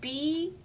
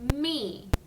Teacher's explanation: our lips go together for b and they pop and they hold together for me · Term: lip sound